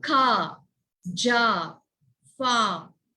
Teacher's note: Again, we don't pronounce the R here. Like in car, jar, far.